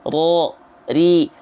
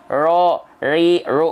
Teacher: juil ya jadi dia bergetar tapi sedikit contohnya ro ri r walaupun bergetarnya hanya sedikit tapi tetap lugas dan jelas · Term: takrir